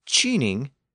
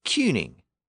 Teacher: it retained its original k sound it did not shift to a CH